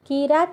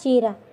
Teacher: మూల ద్రావిడ భాషలోని పదాది కకారం తాళవ్యాచుల పరమైనప్పుడు చవర్ణంగా మారుతుంది. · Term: తాళవ్యీకరణ